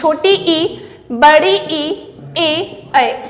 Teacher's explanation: इन चार स्वरों के उच्चारण में जीभ के आगे का भाग काम करता है